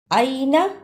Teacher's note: یہ حرف لین ہے، اسے جلدی پڑھنا ہے